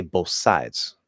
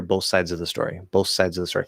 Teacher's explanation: just completely drop the th, make it into an s, and then make it a little bit longer, both sides.